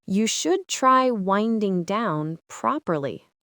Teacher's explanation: That falling tone on down sounds sincere and helpful.